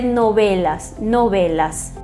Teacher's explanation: o V, na maioria dos países, tem um som mais puxado para um B. É um intermediário entre V e B, os lábios semi-abertos, né, não muito pressionados, e vai se dizer novelas, novelas.